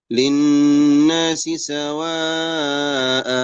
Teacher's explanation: لان التنوين بالفتح لما نقف عليه نقف بفتحه واحده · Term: وقف العوض